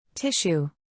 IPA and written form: ˈtɪʃ.uː (Tissue)